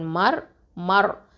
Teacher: இது வந்து ஹெவியாக தான் உச்சரிக்கணும் இந்த ரா சுக்கூனை, ஓகேவா, மர்.